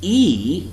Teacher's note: E which is also long vowel sound it's not rounded you can see your lips spread